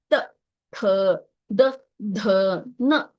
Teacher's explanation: ಮೇಲಿನ ಒಂದು ಇದಕ್ಕೆ ಹಲ್ಲಿಗೆ ಹೋಗಿ ಬಡ್ಕೊಳ್ಳುತ್ತೆ ತ ಥ ದ ಧ ನ ನೋಡಿ ಅಂದು ನೋಡಿ ನಿಮ್ಮ ನಾಲಿಗೆ ಹೋಗಿ ಮುಂದಿನ ಮೇಲಿನ ಒಂದು ದಂತಕ್ಕೆ ಹೋಗಿ ಬಡ್ಕೊಳ್ಳುತ್ತೆ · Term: ದಂತ್ಯ